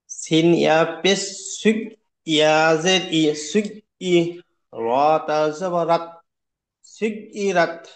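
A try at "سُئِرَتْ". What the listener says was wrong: সুই, সুই, ইয়াসিন ইয়া পেশ সুই, পড়েন। ধাক্কা মারছেন কেন ভাই? ধাক্কা হবে না। সিন ইয়া পেশ সুই।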